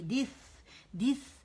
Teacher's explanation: سا پہ آپ ہاتھ سامنے رکھیں، آپ کو ہوا آئے گی